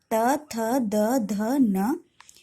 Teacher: इन सब का उच्चारण करते समय जीभ दांत को छूती है इसलिए इन्हें दंत्य व्यंजन भी कहते हैं।